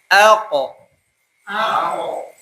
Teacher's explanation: qof ini termasuk dari huruf huruf qalqalah maka dia memantul ya